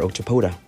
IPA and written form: ɒkˈtɒpədə (Octopoda)